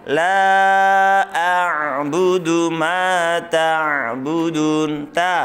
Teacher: Kemudian ainnya ditekan tengah tenggorokan.